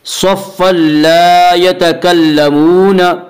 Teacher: صف لا میں ادغام بلا غنہ ہوگا۔ اس کا قاعدہ یہ ہے کہ نون ساکن اور تنوین کے بعد اگر حروف یرملون میں سے کوئی حرف آئے تو ادغام ہوگا، لام را میں ادغام بلا غنہ ہوگا جسے ادغام تام بھی کہتے ہیں۔